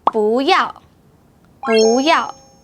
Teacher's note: When 不 is followed by a fourth tone, the 不 should change to second tone.